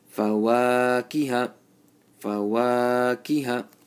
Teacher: Only the wow is supposed to be stretched for one alif.